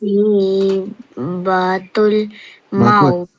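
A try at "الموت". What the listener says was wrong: Maut tu panjang sikit. Maut.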